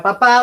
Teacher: los labios se juntan y hacen una explosión pues o se las llama explosivas oclusivas y producen este sonido